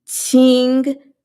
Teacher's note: So you could say ching if you will. It's kind of like ch, but you're going to put the tip of your tongue behind the bottom teeth. So, t instead of ch, which is more forward, it's kind of a little more stunted, a little more widespread.